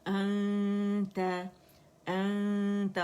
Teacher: हमजा जो है ये अक्सल हल्क से फार थ्रोट से अदा होगा